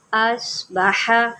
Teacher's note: ہا کو حلق سے نکالے